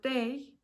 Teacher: A in the word day, where the tongue moves from the mid position to a higher front position. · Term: diphthong